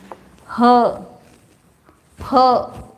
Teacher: खाली कंठ से नहीं, एकदम हृदय से आता है वो, महाप्राण उसमें है, तो इसलिए उसको ह बोलते हैं।